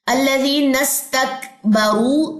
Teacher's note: را کو موٹا بھی کرنا ہے، ہونٹوں کو گول بھی کرنا ہے. اس میں تباعد ہے نہیں، میرے خیال میں واو مد ہے تو اس میں اہتزاز ہے.